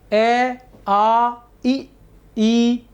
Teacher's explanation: होठ कहीं भी गोल नहीं हो रहे हैं